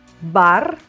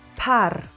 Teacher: voiced B and unvoiced P